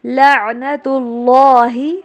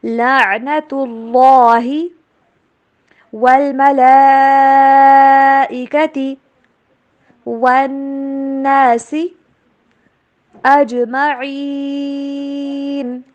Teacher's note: اللہ کے نام کو موٹا کر کے پڑھیں گے